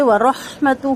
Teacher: ہوگا، علیکم یائلین معروف کریں گے، ورحمتہ واو ہونٹ مکمل گول، را کو پر کر کے ہا سے ملائیں گے، ہا کی ہمس واضح ہوگا اور تا کا پیش لمبا نہیں ہوگا، ہا کا الٹا پیش